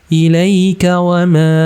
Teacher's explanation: Ilaika wa ma panjang 4 atau 5 harakat. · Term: mad jaiz munfasil